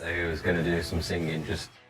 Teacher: people from the Midlands fully pronounce the ing, including a g sound at the end of words. Who's going to do some singing, just...